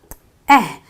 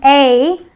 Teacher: at the you know almost at the middle of your mouth so it's an eh sound and you have very relaxed lips when you're doing that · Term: short e sound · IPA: /ɛ/